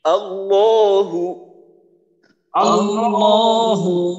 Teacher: আল্লাহর আল্লাহর ল মোটা করতে হবে আর এক আলিফ টা টানতে হবে